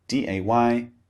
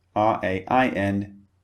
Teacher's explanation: Right, so like we covered in a previous lecture, the sounds in English when they come at the beginning of a word are sometimes slightly different to when they're at the end of a word. So the D sound, when it comes at the beginning, it's very forceful.